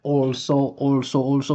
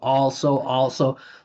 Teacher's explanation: He's pronouncing the whole thing with his lips. Also it's like he's kissing the air.